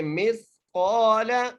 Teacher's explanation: آگے مثقال میم کو سا سے ملانا ہے. میم کو سا سے جب ملائیں گے اور سا کو آپ نے بڑی احتیاط کرنا ہے، یہاں پر سین نہ ادا ہو، سا ہی ادا ہو